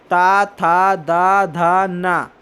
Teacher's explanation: ये जो है दांत की मदद से बोले जा रहे हैं।